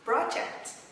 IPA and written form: ˈprɑː.dʒekt (Project)